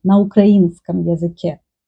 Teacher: And about Ukraine else, if to say speak Ukrainian, for example, using a prepositional case, говорить на украинском языке. Ukrainian person will make stress on и, на украинском языке.